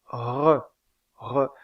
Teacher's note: une constrictive ou fricative vélaire, le re, re.